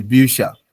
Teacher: for umlauts, they soften the CH to sha, like ish. So the Bücher.